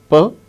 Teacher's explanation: are given there between slanted lines per is a voiceless sound it is a voiceless bilabial plosive plosive when we utter air comes out all of a sudden